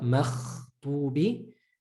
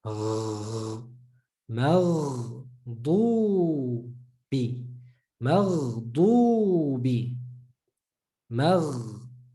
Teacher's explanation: So not maghdubi, more inside the mouth, in the gargling place